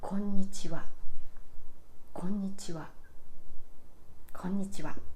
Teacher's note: starts low then moves high and stays high konnichiwa konnichiwa konnichiwa this pitch pattern is called flat pattern and · Konnichiwa starts low, then moves high and stays high.